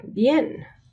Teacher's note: So bien is one syllable. The I and the E kind of stick together, okay?